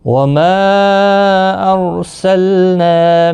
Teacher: وما یہاں پر مد منفصل ہوگا، 3 الف کی مقدار کے برابر کھینچ کر پڑھیں گے ماں کو۔ ارسلنا، رو ساکن سے پہلے زبر ہے اس لیے رو ساکن پر پڑا جائے گا، لام ساکن کو ہلانا نہیں، نا الف مدہ ہے، 1 الف کی مقدار کے برابر کھینچ کر پڑھیں گے۔